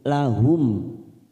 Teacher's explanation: Ulaika lahum mim sukun, namanya bacaan idhar safawi, kita baca jelas tanpa mendengung